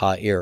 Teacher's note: So it will lose the dagesh forte, and ayin is one of those three consonants where, when it rejects the dagesh forte, the preceding short vowel will compensatorily lengthen to compensate for the loss of doubling